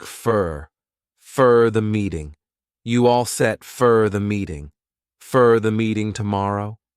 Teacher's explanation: for when it's unstressed has more of a reduced sound a quick sound it sounds like fur